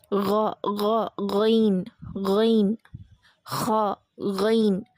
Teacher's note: அந்த மேல் தொண்டையிலேருந்து வர்றது லெட்டர்ஸ் கைன் அண்ட் ஹா.